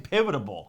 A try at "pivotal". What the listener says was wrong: You're adding extra syllables.